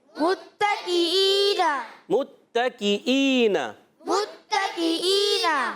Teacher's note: تا مشدد ذرا رک کر ادا کریں گے. حرکتیں میم پر حرکت پیش کی، تا پر زبر کی حرکت، پھر کاف کے نیچے بھی حرکت ہے زیر کی.